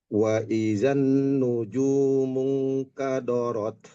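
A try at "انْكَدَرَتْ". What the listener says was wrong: Kada, bukan kado. Kadarot.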